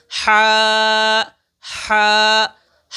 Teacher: ये हरूफ हलकिया में से है। इसलिए इसकी अदायगी हलक से होती है। तो हम इसको हलक से अदा करेंगे।